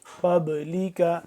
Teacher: من قبلک، قاف با زبر قاب، لام زیر لی، کا زبر کا، قبلک، قاف مل رہا ہے با کے ساتھ، قاف کو موٹا کر کے پڑھیں گے